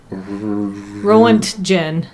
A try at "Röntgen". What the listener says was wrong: Röntgen. No, with roll your R's. Roll the R.